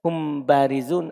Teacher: Ketika mim sukun ketemu ba, didatangkan sebagian hurufnya, dan satru dzatihi, menyembunyikan zatnya. Ketika ada mim sukun ketemu ba, sembunyi mim, hanya ada sebagiannya saja. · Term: ikhfa